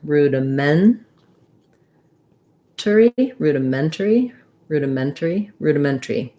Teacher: It might be rudimentary or rudimentary, depending on if we reduce that syllable. The syllable stress is on the ment.